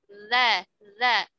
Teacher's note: Itu kan tidak ada hams ya. Dia adanya aliran suara, tapi tidak ada aliran nafas ya.